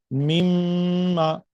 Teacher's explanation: तो आप देखिए नाक के अंदर से आवाज आ रही है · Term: गु्ना